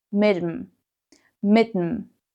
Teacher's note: mit plus dem, which simply becomes mit'm